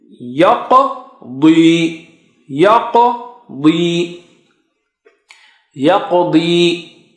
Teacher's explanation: Now dad is very thick and high. Okay, so and qaf is high.